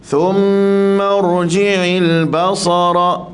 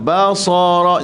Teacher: Pastikan ba lembut, sa tebal, ra tebal.